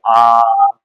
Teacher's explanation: आपको बोलना पड़ रहा है आ तो आपको थोड़ा लंबा खींचना पड़ेगा